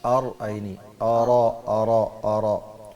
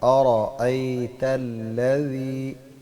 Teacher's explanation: حمزہ کو الگ پڑھنا ہے، را کو الگ